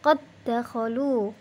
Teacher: Kita lihat contoh lafadz qad dakhalu, ada dal sukun bertemu dengan dal fathah berharokat fathah, maka dibacanya qad dakhalu, qalqalahnya tidak nampak lagi